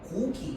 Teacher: 앞에 있는 기억이랑 뒤에 있는 기억은요. 성대가 울리는게 다르거든요. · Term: 유성음과 무성음